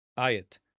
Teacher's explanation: Tav in Hebrew. Notice that the Tau at the end of the word is not pronounced with a soft TH. Sometimes it will be, sometimes it will not be.